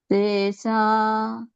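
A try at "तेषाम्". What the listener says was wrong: Not sa, it's sha. Tesha.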